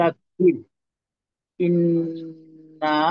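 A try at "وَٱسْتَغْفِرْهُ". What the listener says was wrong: আচ্ছা, এখানে এখানে মনে করেন গইন আছে তো, তো গইনটাকে একটু মোটা ধরনের না করলে অনেকটা গইনের জজমের উচ্চারণ কাফের মতো বোঝার একটা সম্ভাবনা তৈরি হয়।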